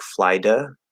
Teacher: you just do a light quick Little D instead of actually tapping it you could do that but we're probably just going to tap